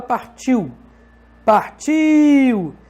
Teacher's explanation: Percebe que o I é mais forte que o U? Tanto que daria até para você colocar um acento hipotético em cima do I.